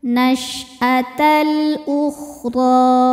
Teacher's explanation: Alif dengan harakat dommah ini adalah hamzahnya. Cara bacanya lam dibaca jelas atau disebut izhar qamari. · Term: idhar qomari